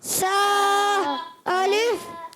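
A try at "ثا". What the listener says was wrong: اچھا آپ نے سا جو پڑھا ہے نا، زبان بہت زیادہ باہر نکالی. سا اتنی نہیں نکالنی. تھوڑا سا سا، یعنی آپ کی زبان یہاں لگے. سا الف.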